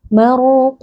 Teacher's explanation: Huruf qaf juga huruf tebal, angkat pangkal lidah.